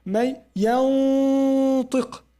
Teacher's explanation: However, it's gunna, but because you go to prepare for the letter, and the letter is harf isti'la, you say may yantiq. You make tafkhim of gunna too.